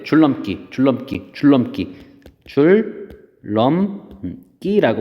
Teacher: 자, 그래서 마지막으로 정리를 해보면 비음인 니은이 앞뒤에 오는 앞하고 뒤 다 왔었죠. 뒤에 오는 유음 리을의 영향을 받아 리을로 바뀌어 발음됨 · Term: 유음화